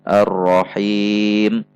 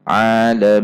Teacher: di sini ada mad arid lisukun. Boleh dibaca 2, 4, atau 6 ketuk. Aturannya adalah ketika kita memilih 2 ketuk saat membaca mad arid lisukun pada ayat pertama, maka sebaiknya pada ayat selanjutnya dalam satu bacaan mad arid lisukun semuanya dibaca 2 ketuk.